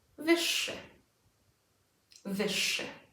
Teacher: Again, not szy, wyższy. The ż z kropką becomes unvoiced.